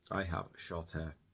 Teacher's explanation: the T connects to the A sound. And the H is completely omitted, completely silent in this case